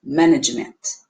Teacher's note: porque eu tenho schwa no último